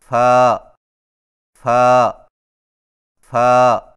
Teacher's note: فا کی ادائیگی میں ثنائے علیہ کے سروں کو نچلے ہونٹ کے گیلے حصے پر لگا کر باریک آواز میں پڑھیں